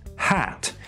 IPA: hæ̞t